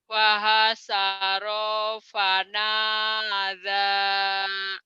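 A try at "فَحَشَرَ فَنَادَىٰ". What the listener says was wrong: Tinggal digedein sinnya. Fahasya shin. Fahasyara fanada.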